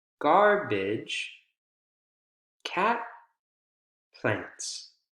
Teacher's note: it continues to rise right at the end of the thought group to indicate that the person's still speaking